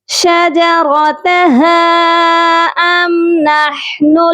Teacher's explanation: ہا کے ساتھ مد منفصل ہے، اس کو بھی کم از کم 3 الف کے برابر لمبا کریں گے. شجرتها ام نحن ہا کی آواز درمیان والے حلق سے آئے گی.